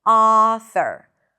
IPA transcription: ˈɑ.θəɹ